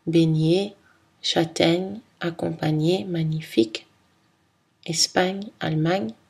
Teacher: Le son gna est une consonne nasale, palatale et voisée.